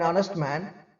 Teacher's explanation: honest has a silent H, so it begins with the vowel sound.